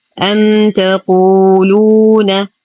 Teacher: ميم ساكنة وبعدها حرف التاء، الحكم إظهار شفوي مع غنة ناقصة